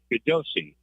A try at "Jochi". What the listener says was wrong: I think it's pronounced Jochi. Jochi. Yep. The G is silent.